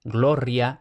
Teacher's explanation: alemanes o anglófonos, lo van a pronunciar, o al menos van a intentar pronunciarlo todo como r fuerte